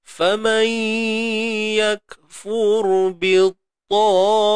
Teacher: Fur ni kita matikan dengan tebalkan ra. Ra ni fur, matikan ra ni dengan tebal sebab ra mati sebelumnya baris hadapan.